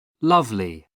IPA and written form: ˈlʌvli (lovely)